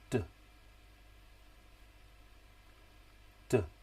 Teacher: D, d is the voiced alveolar plosive.